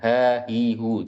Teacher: Padahal bukan ha itu makhrajnya ada di tenggorokan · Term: huruf H